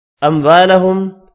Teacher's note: 2 میم ساکن ہے، دونوں پر اظہار ہوگا، الف مدہ کو ایک الف کی مقدار میں کھینچ کر پڑھیں گے۔